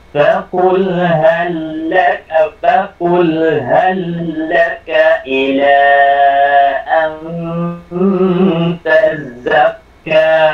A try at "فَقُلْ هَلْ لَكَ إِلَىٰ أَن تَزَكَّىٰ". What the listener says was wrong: Oops, huwag mong lagyan ng shadda yung za sa tazakka. Yung kaf lang. Tazakka.